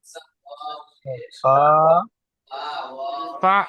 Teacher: আলিফ মাদ্দা বলে, আলিফ মাদ্দাকে এক আলিফ পরিমাণ টান দিয়ে পড়তে হয়